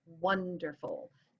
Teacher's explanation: that's a stressed followed by 2 unstressed syllables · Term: dactylic